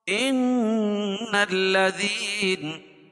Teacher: نون مشدد ہے غنہ ہوگا